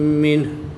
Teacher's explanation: نون ساکن کے بعد ہا حروف حلقی میں سے ہے تو یہاں پر اظہار ہوگا، غنہ نہیں کریں گے بلکہ نون ساکن کو خوب ظاہر کر کے پڑھیں گے